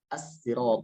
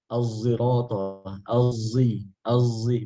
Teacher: Kata as-sirata, ihdinas sirata, as-sirata, ada yang baca as-sirata pakai sin, ada yang baca az-zirata pakai zai campur sod. Az-zirata, az-zi, bukan vo tapi zo, zai campur sod gitu.